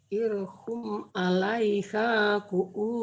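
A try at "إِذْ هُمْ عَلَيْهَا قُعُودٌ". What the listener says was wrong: Jangan irhum, idhum, zal, idhum. Jangan idhum, zal. Idhum. Jangan irhum, idhum, zal. Jangan idhum. Idhum. Oh dengarnya ir ya Bu ya. Zal, dek. Idhum.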